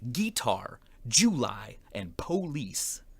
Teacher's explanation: emphasizing the first syllable of words like guitar July and police